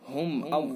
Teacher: اظہار میم ساکن یہاں پر موجود ہے، یعنی اس کے اندر اظہار ہوتا ہے، غنہ نہیں ہوتا، جلدی سے پڑھا جاتا ہے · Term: اظہار شفوی